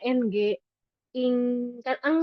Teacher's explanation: suara lirih ada yang lewat mulut tapi dikit karena ketahan sama siapa? Sama lidah belakang. Makanya dia lebih kedengarannya ng ing kan eng ya lebih banyak eng.